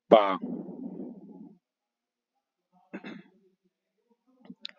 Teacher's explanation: ओष्ठ स्पर्शी व्यंजन अल्पप्राण अघोष वर्ण